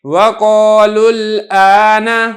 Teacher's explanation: آپ نے اس واو کو حذف کر کے لام کو براہ راست آگے لام کے ساتھ ملا دینا ہے ، اور آپ اس کو پڑھیں گے وَقَالُوا الْآنَ، اس طریقے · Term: واو مدہ